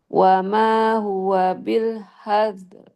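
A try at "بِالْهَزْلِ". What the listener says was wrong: L-nya belum tampak. L. Hazl.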